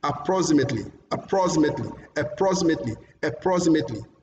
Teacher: the second syllable is also longer than others